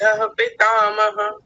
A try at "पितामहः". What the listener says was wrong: यहां पितामह जब बोलेंगे तो उसके बाद में विसर्ग भी है तो क्या बोला जाएगा?